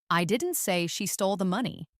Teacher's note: Finally, let's stress money.